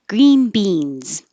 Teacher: green beans I made these both stressed